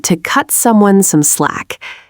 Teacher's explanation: In fast speech, the T in cut is typically held completely silent. >> So, you do not release a sharp burst of air after cut.